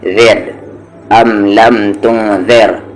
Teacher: لیکن یہاں پر را لائٹ ہے کیونکہ اس سے پہلے زیر ہے